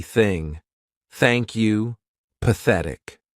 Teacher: the unvoiced TH sound, which means our vocal cords are not going to vibrate